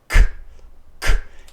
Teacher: Esse som é bloqueado lá na parte de trás.